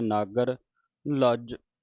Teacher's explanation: ਨਾਗਰ ਤੇ ਅਧਕ ਲਾ ਕੇ ਕੱਸ ਕੇ ਬੋਲਣਾ